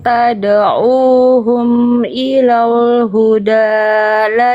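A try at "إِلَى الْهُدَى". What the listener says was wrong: Di sini ilal lam sukun yang di sini tipiskan ya. Jangan ilal. Jangan kayak mau tebal ilal. Bukan ilal huda. Ilal huda.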